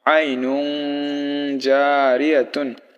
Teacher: আই নুন কিন্তু জিম থাকার কারণে নুন গুন্না হবে